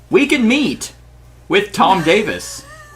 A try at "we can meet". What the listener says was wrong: Sound like you said weekend meet, like not like a weekend meet.